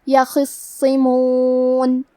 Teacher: کلمت یخصمون میں خا کو تفخیم سے پڑھیں گے. حرف الصاد پہ تشدید ہے، تو ہمیں 2 حرف کے برابر صاد کو پڑھنا ہے، اور کیونکہ اس کے نیچے زیر ہے تو ہمیں صاد کو زیر سے بھی پڑھنا ہے.